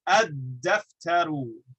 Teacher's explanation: Now we have this lam, which happens to be right next to the dal, pronounced with the tip of the tongue. So we're going to merge the lam into the dal. We double the dal.